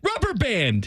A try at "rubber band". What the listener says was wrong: Rubber band. No, rubber band. The accent is on the wrong part of the word. Say rubber band. Rubber band. Rubber band.